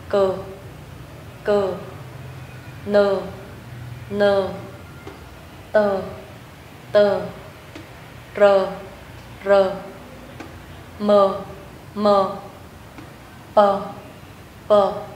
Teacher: các bạn lưu ý mình không cần đọc căng, không cần bật hơi, chúng ta đọc hoàn toàn nhẹ nhàng. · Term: phụ âm thường